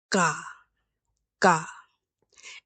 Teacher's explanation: Our first letter is ga ga. It's not a k or a g sound, but it's somewhere soft in between. · So it's a very soft G sound. It's very soft G sound that's somewhat between a K and a G.